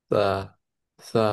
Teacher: জিহ্বার আগা সামনের উপরের দুই দাঁতের আগার সঙ্গে লাগিয়ে দিতে হবে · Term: থা